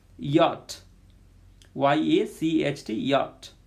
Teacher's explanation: Palatal, front of the tongue comes close to hard palate. Front of the tongue, okay, so first tip, then blade, then front, okay, almost middle part of the tongue.